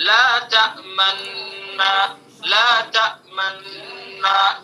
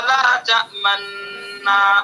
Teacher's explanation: تو جو نون ہے تأمنا پر جب ہم پہنچیں گے تو وہاں اشمام کریں گے، یعنی ہونٹوں سے اشارہ کریں گے